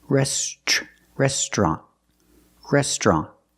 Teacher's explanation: with three syllables we pronounce it with two syllables restrant restaurant we put the TR together to make the sound chch like in truck and tree